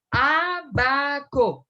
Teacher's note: donde tiene la sílaba tónica en la antepenúltima sílaba o sea en el vagón número 3 empezando a contar de